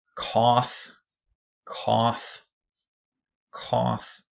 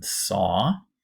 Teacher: That's one of those words with the aw, open O vowel in it, like in saw.